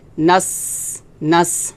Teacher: নাস এটা হামস হবে, নাস, এভাবে বাতাস বের হবে